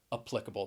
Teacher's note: i would generally say applicable with that schwa and that first syllable and the stress on the second